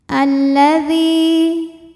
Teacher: lam Tadi kenapa huruf syamsiyahnya lam karena lam sukun lam tasdid ini sebetulnya ada dua lam lam sukun dan lam fathah lam yang sukun tidak dibaca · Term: alif lam syamsiah